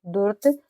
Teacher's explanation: जल्दी से पढ़ा जाएगा क्योंकि यह आधा र है पूरा नहीं